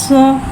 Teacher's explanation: सौद हुर्फ मुस्तारी है, लिहाजा के बाद हलक से मोटी अदा होगी। सौद में सीटी को ज़ाहिर करके पढ़ेंगे